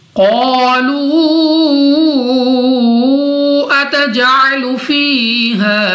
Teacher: یہاں پہ ہمارے پاس قاف مستعلیہ میں سے ہے، موٹا پڑھیں گے، الف سے پہلے زبر الف مدہ 2 سیکنڈ تک لمبا کر کے پڑھیں گے، واو ساکن سے پہلے پیش واو مدہ، مگر اس مد کی وجہ سے 2 نہیں بلکہ 3 یا 4 سیکنڈ تک کھینچ کر پڑھا جائے گا. جیم ہمارے پاس قلقلہ میں سے ہے تو ہمارے مخرج میں جنبش سی ہوگی، یعنی ہمیں اپنی آواز واپس لوٹتی ہوئی سنائی دے گی